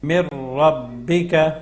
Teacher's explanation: نون میم کو جو ہے ہم نے را کے ساتھ ملا دیا ہے، کیونکہ نون ساکن کے بعد اگلا حرف را ہے تو یہاں پہ ادغام ہوگا